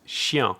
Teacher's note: it's actually the sound e followed by ah so it's a diphthong